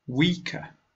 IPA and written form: wiːkə (Weaker)